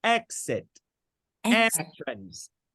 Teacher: All of them are stressed on the first syllable.